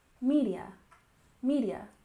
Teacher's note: We emphasize the first syllable in social, social. And media, we emphasize the first syllable, media, media.